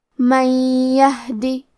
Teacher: یا حروف الادغام بغنہ میں سے ہے تو ہم یہ حکم کو غنہ اور تشدید کے ساتھ ادا کریں گے